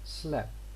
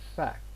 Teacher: Clusters are simplified by dropping the t.